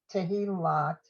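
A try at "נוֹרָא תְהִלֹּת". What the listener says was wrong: Careful, check that last vowel.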